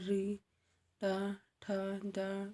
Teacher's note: जब जीभ को कठोर तालु और मूर्धा की संधि को छूता है तो उसे मूर्धन्य बोलते हैं